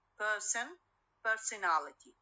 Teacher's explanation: so when i add ality to the person to the stem person it receives the primary stress